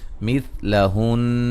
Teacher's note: نون مشدد پہ غنہ ہے، وقفاً بھی غنہ کریں گے اور نون کو ساکن کر دیں گے